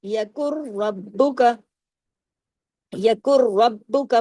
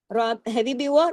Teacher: نون بیچ میں سائلنٹ ہو گیا، یہ ادغام ہو رہا ہے نا